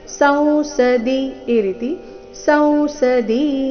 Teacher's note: ಕೊನೆಗೆ ದಿ ರಸ್ವ ಸೌಸದಿ ಈ ರೀತಿ ಸೌಸದಿ ಅಂತ ದಿನ ದೀರ್ಘ ಹೇಳಬಾರದು